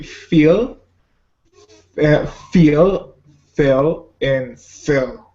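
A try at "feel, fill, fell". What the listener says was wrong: See, I think sometimes you say the I sound like a eh sound. So listen to me first and see if you can kind of hear the difference. Feel, fill, fell. Because you're saying the first and the last one right, but I think sometimes you're saying no, but you're doing good.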